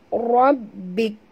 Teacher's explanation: Huruf ra kena baca tebal dan yud pada ba, di atas ba ada tasydid